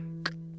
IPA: k